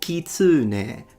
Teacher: He says kitsune. So he made it into a high to low pitch and he stressed the u. The Japanese, they don't stress any syllable and it's a heiban word. · he also put a stress that is not there and made the vowel longer